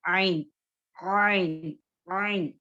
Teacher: आइन को अदा करते हुए हमारी जुबान का जो पीछे का हिस्सा जो है पीछे की तरफ खींचा चला जाता है